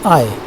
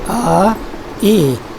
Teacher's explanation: When I say I am taking a single syllable and I'm creating a change in the same single syllable. The first part is pronounced A and the second E, but it is done very quickly, and it is done in the shape of a glide in a single syllable. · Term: diphthong